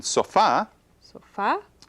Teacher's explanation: it has the stress on the last syllable